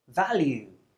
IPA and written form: ˈvæljuː (value)